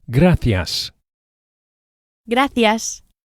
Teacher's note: The C of gracias is [music] pronounced as an English th, as in thanks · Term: soft C